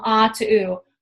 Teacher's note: The back of your tongue is raising, if you can feel that. It's going up to its highest position in terms of vowels. And also your lips and jaw are closing.